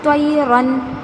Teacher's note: نون کی آواز ظاہر، غنہ نہیں ہو رہا ہے اور لمبا بھی نہیں کرنا ہے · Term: اظہار